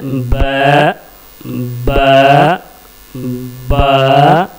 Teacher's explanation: दोनों होठों के अंदरूनी तली को मिला करके बा प्रोनाउंस करेंगे तो सही बा निकलेगा